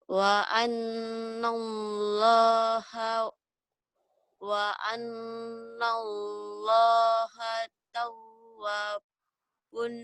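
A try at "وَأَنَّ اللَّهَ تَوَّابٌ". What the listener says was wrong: tahu, wanya panjang.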